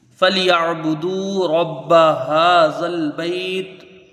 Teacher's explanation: عین کو یا سے ملا کے جلدی پڑھیں گے، جھٹکا نہ ہو